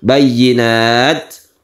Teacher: Bayyinat ada suara mendesis sedikit ya, itu hamas. Bayyinat disebut juga mahmus, itu sifat dari huruf ta dan juga huruf kaf akbar.